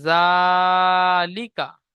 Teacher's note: খাড়া জাবার আলিফ মাদ্দার সমতুল্য, সুতরাং খাড়া জাবারকে একালি পরিমাণ টান দিয়ে পড়তে হবে। লামের উপরে জের আছে, জেরটি হলো হারাকাত, হারাকাতকে তাড়াতাড়ি পড়তে হয়, টান দেওয়া নিষেধ।